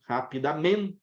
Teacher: A sílaba tônica é men. Então, rapidamente, perde o acento por isso.